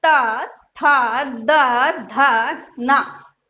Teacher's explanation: ये हमारा कहलाएगा दंत वर्ग। यानी ये वर्ण जब आप बोलोगे तो हमारी जो जीभ है वो दांतों को स्पर्श करती है